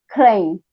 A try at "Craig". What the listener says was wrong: Craig with a G on the end.